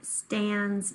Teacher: that consonant blend at the beginning and the z sound at the end